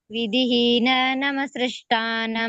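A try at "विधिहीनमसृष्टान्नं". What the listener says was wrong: ವಿಧಿಹೀನಮ ಸೃಷ್ಟಾನಂ ನಮಸ್ರಷ್ಟಾನ ಅಲ್ಲ ವಿಧಿಹೀನಮ ಸೃಷ್ಟಾನಂ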